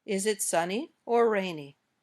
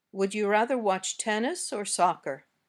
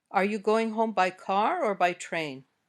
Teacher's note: give a choice between two or more things in this case the intonation goes up on the first choice and down at the end